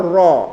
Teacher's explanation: Ro antara o dan a karena dia tebal